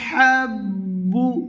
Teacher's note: হা গলার মাঝ থেকে